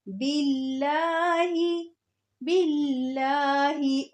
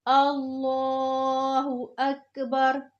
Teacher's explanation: लफ्ज़ अल्लाह के नाम से पहले ज़बर या पेश हो तो लफ्ज़ अल्लाह के नाम को मोटा करके पढ़ते हैं। लफ्ज़ अल्लाह लिखा आ रहा है और उससे पहले ज़ेर हो तो लफ्ज़ अल्लाह के नाम को बारीक पढ़ेंगे